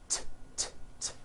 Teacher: It's unvoiced. Your vocal cords are not vibrating.